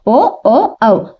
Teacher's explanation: ఇవి కంటి ఓష్ట్యాలు పలికేటప్పుడు మనము ఓ ఓ ఔ, అది మన స్వరం కంఠం నుంచి వస్తాయి మరియు మనం పెదవుల సహాయంతో ఉచ్చరిస్తాం కాబట్టి అవి కంటి ఓష్ట్యాలు అయినాయి.